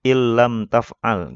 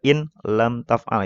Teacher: Karena ini idgham bila guna jadi tanpa didengungkan, tanpa digunah.